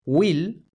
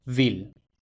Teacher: W se convierte en la labiodental V, aunque esto no se refleja en la escritura.